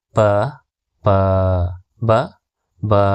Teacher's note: ಈ ಅಕ್ಷರಗಳು 2 ತುಟಿಗಳು ತಾಗುವುದರಿಂದ ಹುಟ್ಟುತ್ತವೆ. ಹಾಗಾಗಿ ಇವುಗಳನ್ನು ಓಷ್ಠಾಕ್ಷರಗಳು ಎನ್ನುವರು.